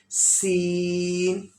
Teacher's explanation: इसको थोड़ा खींचना है और सीटी वाली आवाज से, जैसे सीटी की आवाज होती है, सख्ती से इसको अदा करेंगे.